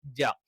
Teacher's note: നാവിന്റെ മധ്യവും അത് മേലെ അണ്ണാക്കിൽ ടച്ച് ചെയ്തുകൊണ്ടാണ് ജ.